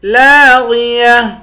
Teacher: لام کے بعد الف ہے، الف حروف مدہ ہے، اس کو ایک الف کی مقدار کھینچ کر پڑھیں گے